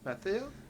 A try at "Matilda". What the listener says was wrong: Matilda. Matilda. pretty sure the H is silent, and it's Matilda.